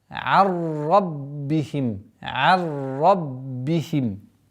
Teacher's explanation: Арраббихим. Здесь у нас ассимиляция без назализации. Ра удваиваем, ба удваиваем